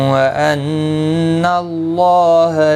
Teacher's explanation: نون مشدد پر غنہ ہوگا، اللہ کا لام زبر کی وجہ سے پر پڑا جائے گا. اس کے اوپر کھڑی زبر بھی ہے، ایک الف کی مقدار کے برابر کھینچ کر پڑھیں گے.